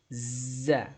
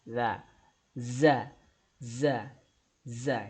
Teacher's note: Huruf berikutnya huruf zai. Ya, huruf zai ini makhrajnya ujung lidah. Ya, ujung lidah kita tempelin di gigi seri bagian bawah. Ya, gigi seri dalam bagian bawah.